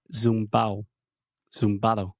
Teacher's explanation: they eat the D sound